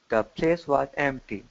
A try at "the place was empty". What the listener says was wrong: good be careful with your th here